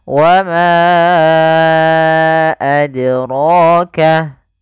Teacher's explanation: qalqalah ini artinya memantul. Maka huruf dal ketika dia sukun, dia harus ada pantulannya. Kesalahan yang terjadi dalam membaca qalqalah yang pertama tidak memantul, tidak dipantulkan, tidak mentul.